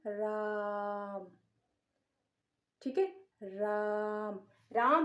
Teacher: राम का उच्चारण क्या होगा? लंबा होगा, दीर्घ से भी ज्यादा समय लगेगा। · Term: प्लुत स्वर